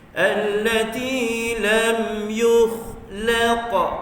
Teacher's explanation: huruf kha tebal, isti'la terangkat pangkal lidah bila sebut huruf kha